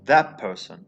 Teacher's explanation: ta will become pa before a bilabial consonant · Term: assimilation